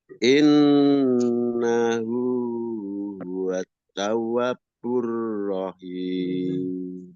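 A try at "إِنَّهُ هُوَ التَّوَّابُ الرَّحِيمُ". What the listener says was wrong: Ya, tinggal betulkan tawa, tawa. wa tidak ada tasydid lagi, bukan tawab, ya. Tawwabur rahim. Innahu huwat tawwabur rahim.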